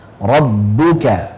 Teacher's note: Jadi rabbuka jangan sampai masuk hidung ya. Rabbuka dan bunya dhammahkan, menyungkan.